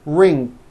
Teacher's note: n g some people who speak English as a second language have gone into the bad habit of adding a k release sound like that after an NG ending · there's just this little K sound at the end of the ing sound